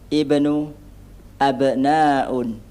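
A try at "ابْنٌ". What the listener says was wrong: Kurang tanwin. Di mana ya? Ibnun. Nah.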